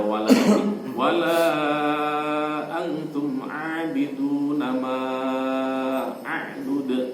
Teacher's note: La wala itu 5 harokat, ma juga 5 harokat. Insyaallah itu terkait dengan mat jaiz munfasil.